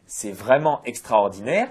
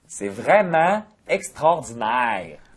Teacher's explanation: les Québécois laissent souvent traîner les sons voyelles.